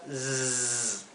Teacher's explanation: cuando la S se encuentra entre 2 vocales, se pronuncia zzz, como un zumbido